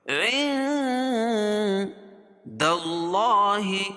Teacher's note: وقالوا لن تمسنا النار إلا معدودة قل اتخذتم عند الله عهدا قل قاف کو پور پڑھیں گے اتخذتم عند تم میم ساکن کے بعد میم اور با کے علاوہ کوئی اور حرف آئے تو اظہار الشفوی اخفاء حقیقی عند کیوں نون ساکن کے بعد حروف اخفاء کے 15 حرفوں میں سے دال ہے تو اس کو ناک میں آواز کو چھپا کر پڑھیں گے